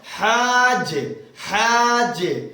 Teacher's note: اب جیم کے بعد الف ہے تو جیم کے بعد الف کو لیں گے کیونکہ جیم کے بعد اگر ڈائریکٹ جیم پھر ہا کے بعد اگر جیم ہوتا تو ڈائریکٹ ہم جیم سے ملا لیتے. یہاں پر بیچ میں الف ہے تو الف مدہ ہے اس لیے الف کے ساتھ ملا کر کے کھینچ کر جیم کو ملانا ہے. ہا الف جیم زبر ڈبل کیپیسٹی کے ساتھ جیم کو ٹچ کرنا ہے.